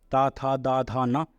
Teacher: ये सब दांत से बोली जाती है